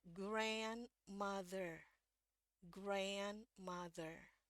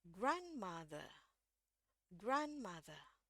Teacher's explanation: kalau di bahasa e Inggris Amerika huruf r selalu bunyi